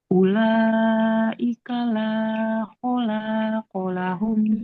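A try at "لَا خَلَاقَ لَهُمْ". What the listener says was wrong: Ulaika la khalaqa lahum. Lam dengan lam yang ininya nggak boleh panjang. La khalaqa.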